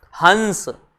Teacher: जैसे इसको पढ़ेंगे अब हंस, तो नाक की ध्वनि का प्रयोग ज्यादा होगा।